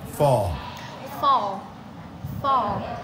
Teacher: Chúng ta có âm này là âm O và chúng ta có âm chữ L cuối thì các bạn nhớ là cong lưỡi lên cho cô nhá.